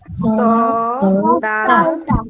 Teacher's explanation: জিহ্বার আগাকে সামনে যে দুইটা বড় দাঁত আছে সেই দাঁতের গোড়া ভিতরের থেকে গোড়া লাগাবো